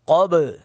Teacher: قب با ساکن پر قلقلہ کر رہے ہیں